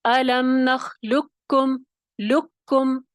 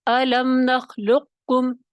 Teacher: قاف موٹے قاف کی آواز کو ختم کر کے باریک قاف کو پڑھیں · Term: ادغام تام